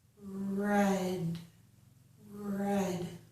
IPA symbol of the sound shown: ɹ